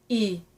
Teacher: So you keep your tongue and your teeth in exactly the same position as for E, but just round your lips.